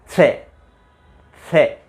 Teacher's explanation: इसका उच्चारण होता है जीभ का अग्रभाग, जिह्वा का अग्रभाग ऊपर वाले दांतों के पीछे वाले मसूड़े के स्पर्श करके फिर बोलो से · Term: मूर्धन्य से